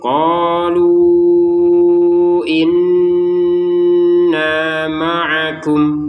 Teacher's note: Jadi menjadi lima harakat lunya itu lima harakat. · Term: 5 harokat